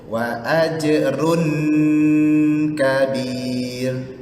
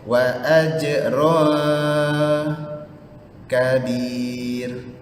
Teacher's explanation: bunyi sengau lidah kita yang belah atas jangan sentuh langit-langit atas. Okey, jangan sentuh langit-langit atas.